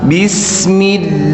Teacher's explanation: pada kata Allah tidak boleh lebih dari dua harakat